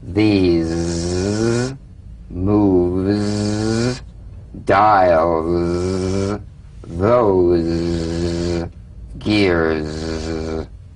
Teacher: It's in that little space that the Z sound is formed. So feel a smooth, strong vibration in the teeth and in the front of the tongue